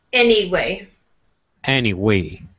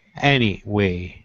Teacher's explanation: Any is going to be stronger than way.